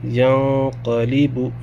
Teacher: تنوین یا نون ساکن کے بعد اگر حروف اخفا میں سے کوئی حرف آئے تو نون کی آواز کو ناک میں چھپا کے پڑھتے ہیں، ایک الف کے بقدر۔